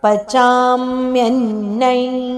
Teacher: ಚ ವರ್ಗದ ಅನುನಾಸಿಕ ಞದ ಉಚ್ಚಾರಣೆ ಬೇಕು